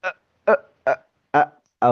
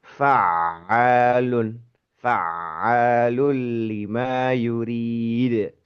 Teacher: Jadi sebelum terucap vokal itu tertahan ee suara itu tertahan. · Jadi huruf ain itu cenderung untuk lunak sebetulnya berbeda dengan hamzah yang menghentak.